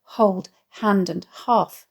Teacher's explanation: the alliterated breathy aspirated H sound of hold hand and half